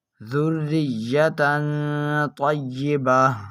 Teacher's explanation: اس تنوین میں بھی اخفا کا قاعدہ لگنے کی وجہ سے ہم اس تنوین میں گنہ کر کر پڑھیں گے